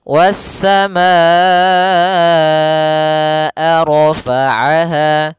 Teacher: Was-samaa, baru dilepaskan a-nya. Kita panjangkan dulu ma-nya baru bacaan ke a. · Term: mad wajib muttasilnya